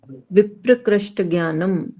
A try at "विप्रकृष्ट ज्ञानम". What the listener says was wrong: विप्र मत बोलो, विप्रकृष्ट। वि अलग पढ़ो, प्रकृष्ट अलग पढ़ो।